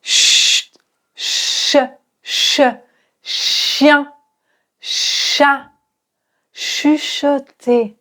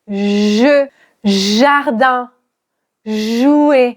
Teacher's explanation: Ensuite le je qui est comme le che, mais tu l'as compris, là il y a une vibration.